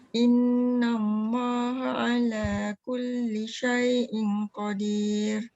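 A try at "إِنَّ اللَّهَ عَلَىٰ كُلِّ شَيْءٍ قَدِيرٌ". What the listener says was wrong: Dengung, jangan tinggalkan. Syai'in qadir.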